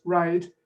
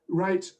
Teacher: the one that finishes with the voiced consonant, the vowel sound is longer, and the one before the unvoiced consonant, it's clipped